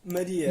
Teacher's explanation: com A fechado, já que ele não está na sílaba tônica.